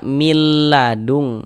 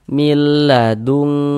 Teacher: Kemudian tidak digunahkan. Jadi baca pendek saja. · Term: idgham bila ghunah